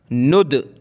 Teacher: कलकला के 5 वर्ड हैं, क़ाफ़ ता बा जीम दाल। तो कलकला करेंगे यानी ये वर्ड हमारे मुंह के अंदर, माउथ के अंदर घूमे, पलटे, गेंद की तरह, जैसे दीवार पर लगाते हैं वापस आती है, इसी तरह।